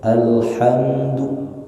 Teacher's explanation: huruf mim di situ jangan ditahan terlalu lama